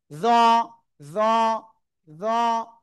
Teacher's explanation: জিহ্বার আগা উপরে দুই দাঁতের আগায় লাগিয়ে নরম করে এটা উচ্চারণ করব, কিন্তু একটু মোটা আওয়াজে